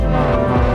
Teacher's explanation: The second tone goes up